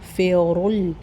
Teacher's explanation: استغفر اللہ، تھوڑی وسل آئے گی سین میں، تا پتلا اور غین سے ملے گا تو غین موٹا ہوگا۔ فیرل، فی باریک ہوگا، رول را موٹا ہوگا اور لام بھی موٹا ہوگا کیونکہ ضمہ ہے، پیش ہے۔